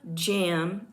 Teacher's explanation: The j sound is a voiced palatal affricate.